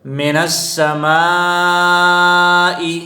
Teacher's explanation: کصیب من السماء، من السماء میں الف مدہ ہے، پھر ہم نے دیکھا کہ الف مدہ کے بعد حمزہ اسی کلمے میں آیا ہے تو اس کو مد متصل کہتے ہیں، اس کو 5 الف کے مقدار کھینچ کر پڑھیں گے۔